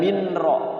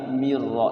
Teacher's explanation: nunnya langsung masuk ke ro namanya apa idgham bila guna nunnya masuk ke ro dimasukkan Mir Ro Jadi tidak Min ro · Idgham bila guna, nunnya masuk ke ro, dimasukkan mirro. Jadi tidak minro tapi mirro, langsung ke ro, ngeloncat ya ke ro. Namanya idgham bila guna.